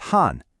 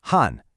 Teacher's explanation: It's that sharp fourth tone again